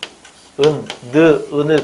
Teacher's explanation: 혀끝이 윗니몸에 붙는 모양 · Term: 니은